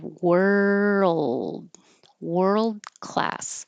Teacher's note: World, you hold that D. Class. Remember, world class.